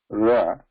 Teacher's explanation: Ra. Pariveshta, the underside of the tongue. Tip, reversed. Touching the murdha is the position for the ra. And that is the abhyantara prayatna.